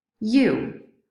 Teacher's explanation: so we know this is the back high rounded vowel